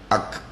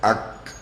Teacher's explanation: kaf keluar daripada pangkal daun lidah, diangkat ke langit lembut, ak, dan dilepaskan, ak.